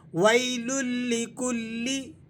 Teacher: تنوین اور اس کے بعد لام آ گیا یرملون کا، تو یہاں آپ نے ادغام کرنا ہے، لیکن یہ ادغام بلا غنہ ہوگا۔ ویل لکلی، کلی، لام کو آپ نے کلی اس طرح پڑھنا ہے، کلی کھینچیں گے نہیں۔